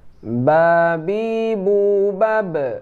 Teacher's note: Itu ba ini dempet antara bibir atas dan bibir bawah.